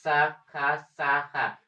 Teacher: आपके संघर्ष हो रहा है जीभ में और ऊपर ऊपर में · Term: संघर्षी व्यंजन